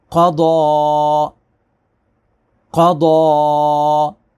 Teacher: قاف اور ضاد یہ دونوں پر رہیں گے، دونوں کی آواز موٹی ہوگی، دونوں حروف مستعلیہ ہیں، اور یہ جو یا ہے یہ رسم الخط ہے، اس کو سائلنٹ کریں گے، یہ نہیں پڑھا جائے گا، اور یہ سائن آف مد ہے، اس کو ہم نے 2 سے 4 الف تک کھینچنا ہے۔